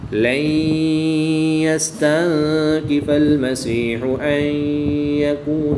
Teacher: نون ساکن کے بعد یا حروف یرملون میں سے ہے تو یہاں پر ادغام مع الغنہ ہوگا، غنہ کر کے پڑھیں گے۔ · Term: اخفا